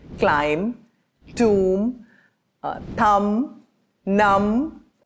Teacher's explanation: in those cases the B tends to be silent